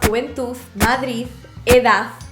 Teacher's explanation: ambos pronunciaban palabras terminadas con d con zeta